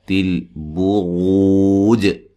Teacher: را کو موٹا ادا کرنا ہے